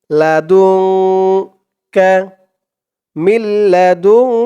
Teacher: সাকিনের পরে ইকফার 15 হরফের এক হরফ কাফ আসছে তাই এখানে ইকফা অর্থাৎ নাকের ভেতরে লুকিয়ে গুন্না করে পড়তে হবে